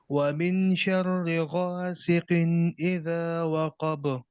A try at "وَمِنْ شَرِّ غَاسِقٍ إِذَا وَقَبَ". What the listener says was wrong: قاف کو اور تھوڑا موٹا کریں. غاسقن قن اذا. ہم یہ آگے پڑھیں گے اگلی کلاسز میں، لیکن ابھی سے آپ کو بتا دیتا ہوں وہ من نہیں ہے. وہ آواز کو ناک میں جانا چاہیے یہاں پہ. وہ شرری.